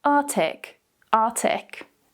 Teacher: It's quite common for native speakers, especially when we're talking quite quickly, to remove that first k sound.